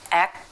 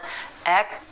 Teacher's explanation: you lift the back of the tongue to the soft palate